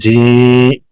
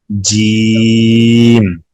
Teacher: जीम अदा होता है जुबान का बीच ऊपर का तालु, زبان کا بیچ اوپر کا تالو, اس کو اوپر اٹھائیں گے زبان کو, جیم, جی, جیم, ناک میں نہیں آواز لے کے جائیں گے, جی یہ نہیں کریں گے, جیم.